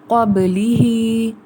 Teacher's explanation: حروف قلقلہ موجود ہیں با، اس لیے ہم نے اس کو ہلایا ہے